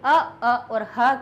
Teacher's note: अ अ और ह का उच्चारण स्थान कंठ है